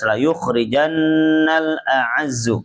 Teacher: Kemudian khnya dibaca tebal dulu. Ini tafkhim ya.